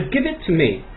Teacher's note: 这个▁it▁的▁t▁呢跟后面的▁to▁啊相同的部分，记住叠在一起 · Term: 叠合